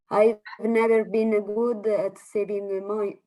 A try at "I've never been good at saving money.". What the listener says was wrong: In this case, that's correct.